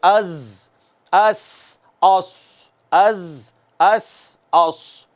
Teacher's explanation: یہ نوک زبان ثنایا علیہ اور سفلا دونوں کے کناروں سے جو حروف ادا ہوئے تھے نا 3 حروف صفیریہ، یہ وہ ہیں۔ تو ان میں ہمیشہ سیٹی کی آواز آنی چاہیے